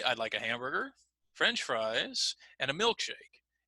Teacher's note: milkshake we might use a little bit more rising and falling intonation because that's the end of that particular group so again we